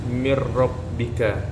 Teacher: ro kan di situ bergetar rnya itu dinamakan attakrir